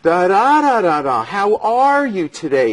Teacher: It's very legato. It's very connected. It's very musical.